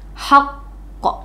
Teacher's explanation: haqq itu disebut dengan qalqalah kubroh karena dia berada di akhir ya, di akhir kalimat atau waqaf. Jadi bacanya haqq gitu, ditekan beberapa harokat, 2 harokat ya, haqq gitu.